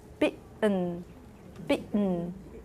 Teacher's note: The voiceless glottal stop is allophone of the T phoneme The T could show up as a glottal stop in certain environment, and this is the certain environment. If it's after a stressed vowel, if that T is after a stressed vowel and before a syllabic nasal in the same syllable, American English speakers tend to make that T a glottal stop.